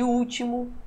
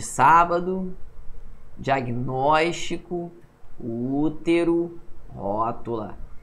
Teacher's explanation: proparoxítona, sílaba tônica, é a antepenúltima, a terceira de trás para frente